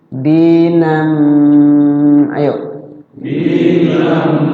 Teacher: Ya, fathatain ketemu mim jadi idgham digun dimasukkan. Fathatainnya dimasukkan ke mim dan kemudian digunnah.